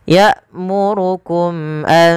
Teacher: pada mim mati bertemu hamzah ada izhar syafawi, dijelaskan suara mimnya.